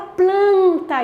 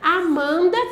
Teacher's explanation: Veja, a palavra planta, você percebe ali que você tem tanto o P, ele é pronunciável, o L é pronunciável, mas quando você tem esse N ali, depois de uma vogal, ele não é pronunciável, você não fala planeta, você fala planta. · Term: nasalização